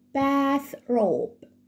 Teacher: حرف التي والاتش في كلمة bath بنطلع لساني في التي والاتش بننطقهم as in th sound فبقول bath robe.